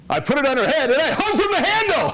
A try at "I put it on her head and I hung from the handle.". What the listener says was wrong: Good, slow down and don't rush the punchline.